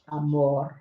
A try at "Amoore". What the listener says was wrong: I think you got to roll that.